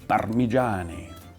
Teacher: if you say it the Italian way, well, you do have to roll a little bit this R